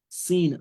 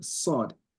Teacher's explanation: the sin is pronounced with the open mouth, and the sod is pronounced with a round mouth.